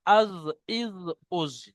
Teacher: জিভের কিনারা তার বরাবর উপরের মাড়ির গোড়ার সাথে লাগিয়ে উচ্চারিত হয় জদ, যেমন আজ, ইজ, উজ।